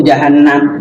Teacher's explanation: Di huruf gunnahnya itu agak ada jeda waktu. Minimal dua ketukan.